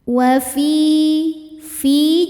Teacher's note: Ya sukun didahului kasrah maka panjang dua harakat. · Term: mad thobi'i